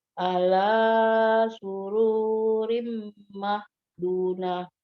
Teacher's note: Dari tenggorokan bagian tengah huruf ain. La-nya 2 harokat, tidak boleh lebih. 2 harokat saja. Satu kali ngayun ya, 1 alif.